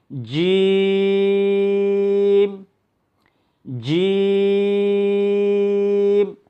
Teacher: জিহ্বার মধ্যখান তার বরাবর তালুর সঙ্গে লাগবে এবং কি আওয়াজটা একটু শক্ত হবে।